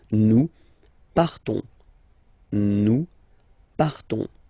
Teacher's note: Okay, so the same phonetical form for these persons, but then obviously and of course for nous it will be different. So classic ending ONS, you don't pronounce the S, you just have this on sound nasal